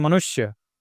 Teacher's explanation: मनुष्य लिखा हुआ है तो नु यह वाला श से तुरंत मिल रहा है। मनुष्य मनुष्य थोड़ा भी लेट नहीं हो रहा है। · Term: ह्रस्वकार